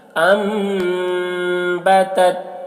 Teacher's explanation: نون ساکن کے بعد با ہے تو نون کو میم سے ملا کر غنہ اخفا کے ساتھ پڑھیں گے، اس کو اقلاب کہتے ہیں۔